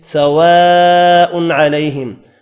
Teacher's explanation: الف کے اوپر بڑی مد ہے، 5 الف کی مقدار میں کھینچ کر پڑھنا ہے